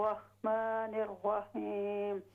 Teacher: را میں واو کی آواز نہ ہو